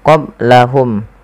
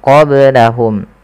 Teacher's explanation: Nah, ketika melafalkan qaf lebih tebal sedikit. Kemudian qablahum ada ba sukun maka dibaca dengan qalqalah. Kesalahan yang terjadi adalah tidak memantulkannya.